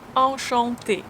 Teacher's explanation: You just say enchanté. You have two nasal A sounds here. Enchanté. Et fermé.